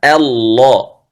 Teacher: التفخيم في حرف اللام في لفظ الجلالة وليس في الهمزة. الهمزة والهاء مرقق، إنما التفخيم في اللام.